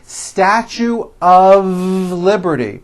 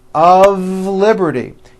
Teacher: Even though the word of is spelled with an F, we pronounce the word of with a voiced V.